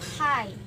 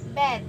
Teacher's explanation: P, b is the place is bilabial. P is a voiceless. B is a voiced.